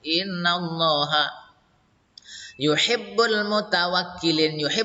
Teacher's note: lafal Allahnya di sini lam jalalnya juga dibaca tafhim karena didahului fathah